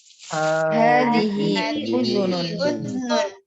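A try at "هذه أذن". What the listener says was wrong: Udhunun ya, nggak disukunkan zalnya. Sekali lagi, hadhihi udhunun.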